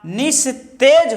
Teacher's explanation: जैसे नी है, अब यहाँ विसर्ग के पहले छोटी ई की मात्रा है ई और विसर्ग के बाद ता वर्ण है, ता व्यंजन है, इसलिए विसर्ग का दंत सा हो जाएगा, निस्तेज होगा, निस्तेज होगा।